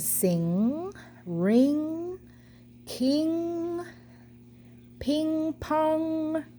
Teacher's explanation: they do all use your nose to create the sound